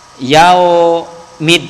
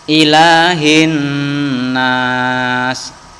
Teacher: Kalau alif lam samsiah dibaca lebur. Alif lamnya ini tidak terbaca dan tidak terdengar.